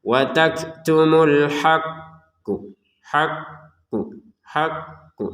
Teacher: ditekan tapi jangan lama-lama juga tekanannya ya. Sekedarnya saja tekan kemudian dipantulkan. Ditekan untuk yanya-nya kemudian dipantulkan untuk qofnya ya. · maka caranya adalah kita tekan dulu baru kita pantulin ya. Karena ada tasdidnya di atasnya. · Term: pantulan